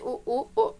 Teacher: ऐसे स्वर हैं जिनके उच्चारण में होठों का आकार गोल हो जाता है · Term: वृत्ताकार स्वर